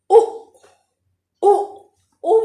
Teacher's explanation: में मुंह गोल हो रहा है लेकिन मुंह पतला ही खुल रहा है, तो हम इसको भी समृद्ध में ही लेंगे।